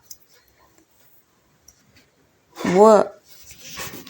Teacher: ದಂತೋಷ್ಠ್ಯ ಅಕ್ಷರ ಈ ಅಕ್ಷರ ಹಲ್ಲು ಮತ್ತು ತುಟಿಗಳ ಸಹಾಯದಿಂದ ಹುಟ್ಟುತ್ತೆ